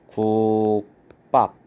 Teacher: 기역하고 비읍하고 만나면 뒤에 비읍이 쌍비읍으로 이렇게 발음이 됩니다. 그래서 발음을 하면 국밥 이렇게 발음이 되기 때문에 된소리 현상이 일어났다라는 걸 볼 수가 있고요.